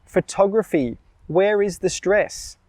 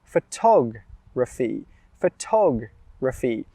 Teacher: Well, the stress is on the second syllable.